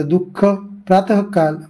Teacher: ठीक आहे नंतर विसर्ग विसर्ग याचा अर्थ श्वास सोडणे असा होतो विसर्गाचा उच्चार ह या वर्णाला थोडा हिसडा देऊन करतात